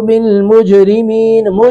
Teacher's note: یہاں پہ جیم ساکن پہ قلقلہ ہو رہا ہے